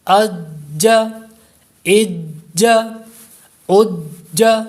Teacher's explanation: چونکہ یہ حروف قلقلہ ہے، مشدد ہے، اس لیے اس کو جماؤ سے پڑھیں گے